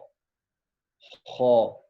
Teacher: جو شروع والا حلق ہے جو منہ کی طرف ہے وہاں سے ادا ہوگا خا